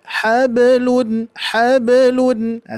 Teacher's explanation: maka terdengar menjadi ringan karena secara langsung kita ketika memantulkan huruf ba langsung memasuki ke huruf lam ya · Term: Sugra, qalqalah